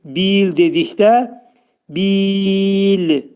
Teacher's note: Burada 4 hərəkə miqdarında uzadacağıq. Çünki mədd aris hökmündə olur.